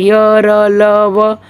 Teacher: अन्य व्यंजनों की तुलना में इनके उच्चारण में श्वास का अवरोध कम होता है। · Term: अर्धस्वर